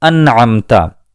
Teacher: اس نون ساکن کی آواز کو ہم نے بالکل ظاہر کیا ہے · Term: اظہار